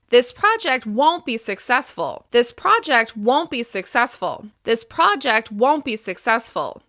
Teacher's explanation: Because we're stressing won't, the listener is left thinking of other options that might be more successful. It simply sounds more tactful.